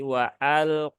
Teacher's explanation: wunya tipis ya dan hamzahnya jangan diseret jangan wal wal tapi waalq nah lamnya juga Sama ya dia